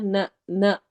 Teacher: نہ لمبا نہیں ہوگا، نہ کو فوراً ادا کرتے ساتھ ہی چھوڑ دینا ہے، یعنی نہ نہیں ہونے دینا، نہ نہ۔